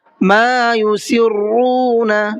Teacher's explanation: ما کے میم کو بھی کھینچنا ہے، یہاں پر الف مدہ کا قاعدہ ہے، اس لیے کہ الف سے پہلے زبر ہے۔